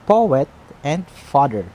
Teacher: we're putting a stress in the first syllable of the word. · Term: trochee